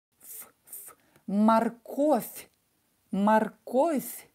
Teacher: Морковь. And voiced V will become unvoiced F. F, F. Морковь.